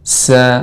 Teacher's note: sifat sin yang tajam dan tipis